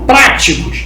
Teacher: Práticos é uma palavra proparoxítona, antepenúltima sílaba tônica.